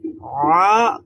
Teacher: কণ্ঠনালীর মাঝখান থেকে, মাশাআল্লাহ, এটা মধ্যখান একেবারে থেকে। কণ্ঠনালীর মধ্যভাগ থেকে উচ্চারিত হয়। আর এখানে আপনারা দেখতে পাচ্ছেন একটু চাপ দিতে হয়, তখনই আ উচ্চারণ হয়। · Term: আইন এবং হা